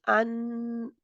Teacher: जब मखर बंद होता है तो जुबान की नोक बंद कर रही होती है मखर को तो क्या होता है कि उसकी आवाज नाक के जरिए जारी रहती है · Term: नून